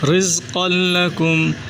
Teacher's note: قاف کو موٹا کریں، را کو بری کر کے، زا کو سیٹی سے